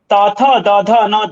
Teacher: त थ द ध न दंतव्य, जीभ का दांतों तक गंतव्य